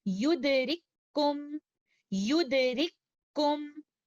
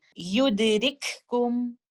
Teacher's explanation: ہم پہلے والے حرف کاف کو دوسرے والے حرف کاف کے اندر مدغم کر دیں گے۔ اسی لیے آپ کو عثمانی اسکرپٹ میں دوسرے والے حرف کاف کے اوپر شدہ کا نشان بھی نظر آتا ہے، جو کہ اس بات کی نشاندہی کر رہا ہوتا ہے کہ یہاں پر ادغام کامل ہو رہا ہے۔ · پہلے والے لیٹر کاف کا اظہار نہیں ہوگا، ہمیں ہمس کی کوئی آواز یہاں پر نہیں آئے گی، ہم اس کو اس طرح سے نہیں پڑھیں گے یدرککم، اس طرح سے ہم اس کی ادائیگی نہیں کریں گے، کیونکہ یہاں پر دو ایک جیسے حروف کا کامل ادغام ہو رہا ہے۔